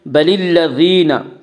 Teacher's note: بَلِ الَّذِينَ، یا مدہ وہ یا جو ساکن ہو، اس سے پہلے زیر ہو، یا مدہ کو 1 الف کے برابر کھینچ کر پڑھیں گے